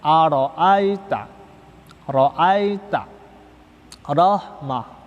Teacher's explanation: apabila ro berharokat fathah, ro berharokat fathah itu juga tebal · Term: tafkhim